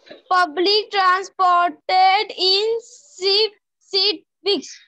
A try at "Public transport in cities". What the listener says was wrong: Transport. It's not transported, beta. It's transport in cities.